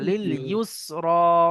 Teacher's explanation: এটা সিন হবে শিন হবে না মোটা হবে না